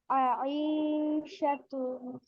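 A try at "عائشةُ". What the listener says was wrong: ইতে টান নাই, আতে টান আছে, আইনে। আইশা তু।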